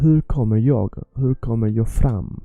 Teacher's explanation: It has to be a soft h, h, h, and it's not hur, it's remember, you stick your tongue out when you say u, and the r has to be soft. You pronounce the r to 15-20%, almost not. You can almost not hear it.